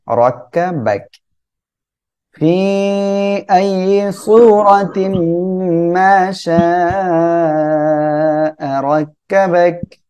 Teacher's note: শা চার আলিফ টান হবে র মোটা করে পড়বেন